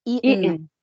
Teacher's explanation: the t can be pronounced like hamza. Okay. This is called the glottal stop. It comes from the glottis. The glottis is the opening between our vocal cords.